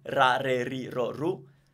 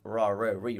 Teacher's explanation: Italian R is way different from the English R. It's a lot more frontal